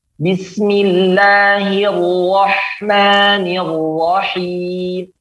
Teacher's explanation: ro tempat keluarnya dari lidah bukan bibir